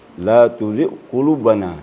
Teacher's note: jadi termasuk huruf berat membacanya dengan mengangkat pangkal lidah